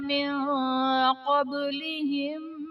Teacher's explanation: من قبلهم میں نون ساکن کے بعد حروف اخفاء میں سے قاف آ رہا ہے تو یہاں پر اخفاء کا قاعدہ ہوگا، یعنی نون ساکن میں ہم غنہ کر کے پڑھیں گے